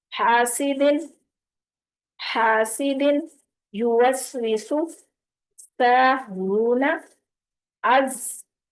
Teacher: دیکھیں سیٹی کی ساؤنڈ آ رہی ہے کلیئر